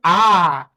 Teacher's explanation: जीभ का सबसे अंतिम भाग पर, मतलब जीभ का पिछला भाग प्रयोग हो रहा होगा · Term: पश्च स्वर